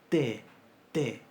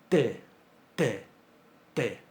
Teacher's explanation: en el caso de esta T velarizada, la lengua se empuja hacia adelante y la superficie de contacto de la lengua es mayor con el alvéolo. Entonces fíjense que uno dice T, T con la punta de la lengua, pero esto se pronuncia T, T, T.